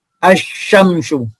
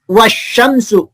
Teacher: Jadi cara membacanya kalau al-syamsiah yaitu bacaan lamnya tidak terdengar atau tidak jelas. Jadi hurufnya dimasukkan ke huruf sesudah huruf lam, yaitu huruf syamsiah. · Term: idgham syamsiah